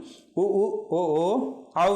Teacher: நன்னூல் சொல்லும் நன்னூல் சூத்திரம் உ உ ஓ ஓ அவ் இதழ் குவிவே. இந்த இதழ்களை குவித்து ஒலிப்பதாலே இந்த எழுத்துக்கள் உருவாகின்றன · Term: இதழ் குவிந்த எழுத்துக்கள்